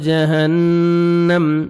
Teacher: نون مشدد غنہ کریں گے